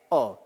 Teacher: आ तथा ओ के बीच की ध्वनि है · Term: अंग्रेजी भाषा से ग्रहित स्वर